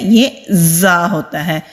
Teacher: जब हम ज को अदा करते हैं दांत आपस में हमारे मिलेंगे और जुबान की टिप नीचे वाले जो दांत है सामने वाले उनके मसूड़ों पर मजबूती के साथ लगाएंगे तो ये वाली बजिंग साउंड वाली आवाज आती है